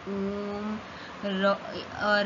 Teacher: जिन स्वरों के जिनका उच्चारण करने में 3 मात्रा से अधिक समय लगता है, इसे प्रलुप्त स्वर कहते हैं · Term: त्रिमात्रिक स्वर